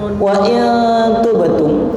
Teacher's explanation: nun mati kepanggih ta diwaos ikhfa. Ikhfa ini yang 10 yang tipis.